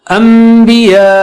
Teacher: اس کو غنہ سے کریں گے نا، 2 حرکت ناک کی آواز سے